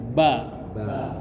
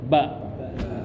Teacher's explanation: Huruf ba itu kedua bibir Pak, syafatain nempel